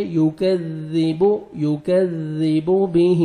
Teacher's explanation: وما الف مد ہے، 1 سیکنڈ میم کو کھینچنا ہے، یکذب، کاف کو باریک پڑھنا ہے، ذال کو نرمی سے ادا کریں گے، زور سے نہیں پڑھیں گے